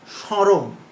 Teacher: আদ্য মফলা অনুচ্চারিত থাকে তবে সংযুক্ত ব্যঞ্জনটি সানুনাসিক হয় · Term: সানুনাসিক উচ্চারণ